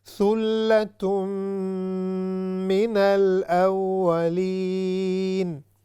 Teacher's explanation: غنہ بھی کیا ہے جو کہ 3 سیکنڈز نیزل ساؤنڈ اس میں ہوگا